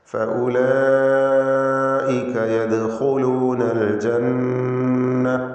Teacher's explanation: യദ്ഖുലൂന ദാലിൻ്റെ സുക്കൂൻ ഖൽഖല സുഗ്റ നൽകി ശബ്ദം ഹറക്കത്ത് പോലെ വ്യക്തമാക്കണം, ചലിപ്പിക്കണം.